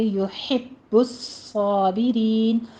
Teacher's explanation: با اور صاد کے اوپر تشدید ہے، سختی سے ادا کریں گے، صاد میں سیٹی کی آواز بھی آنی چاہیے